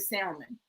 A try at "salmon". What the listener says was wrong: The L is silent. L is silent.